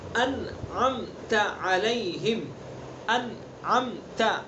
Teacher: انع کے نون ساکن ہے، اس کے بعد عین ہے، تو یہاں اظہار ہوگا، اظہار حلقی. اس کو یعنی انعمت ایسے نہیں پڑھیں گے، انعمت اس طرح پڑھیں گے.